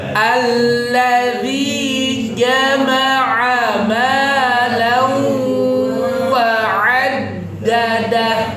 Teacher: Jama'a pakai jim, tengah lidah kena langit-langit.